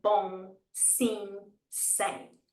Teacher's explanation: make sure your lips don't shut because if your lips shut that's going to automatically make a m sound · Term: nasal sound